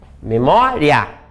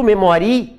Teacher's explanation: ditongo crescente quando eu tenho a semivogal mais a vogal